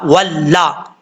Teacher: हा पेश हु, वाव लाम जबर वल, लाम जबर ला, वल्ला। वाव को पढ़ते वक्त होंठ गोल होंगे, अगर होंठ गोल नहीं किए तो समझ लीजिएगा कि वाव सही तरीके से अदा नहीं हुआ। लाम जबर ला, हुवल्ला, जब वाव को लाम से मिलाएंगे तो अलिफ को छोड़ देंगे, इसको नहीं पढ़ेंगे।